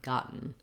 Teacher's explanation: Because we're just doing the syllabic N, the E doesn't make any sound here. We just do the N sound, gotten.